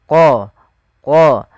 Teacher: qola qola ini tebalkan huruf qof-nya qo dari mana makhraj daripada huruf qof yaitu pangkal lidah kita menempel dengan langit-langit atas